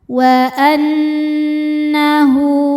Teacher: Cara membacanya berdengung, tahan dengungannya kurang lebih 2 harokat. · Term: gunnah musyaddadah